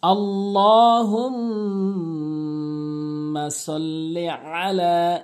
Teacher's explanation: আল্লাহুম্মা সাল্লি আলা, এখানে ২-৩টি ভুল হয়, যেমন ল অবশ্যই একালিফ টেনে পড়তে হবে, এবং হুম ওয়াজিব গুন্না করে পড়তে হবে, নাকের ভিতর নিতে হবে। এখানে আইনটি আইন উচ্চারণ করতে হবে, হামজা এনে উচ্চারণ করে অধিকাংশ লোক।